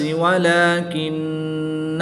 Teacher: یہاں پر نون مشدد ہے اور نون مشدد میں ہمیشہ غنہ ہوتا ہے، یہاں پر بھی غنہ کر کے پڑھیں گے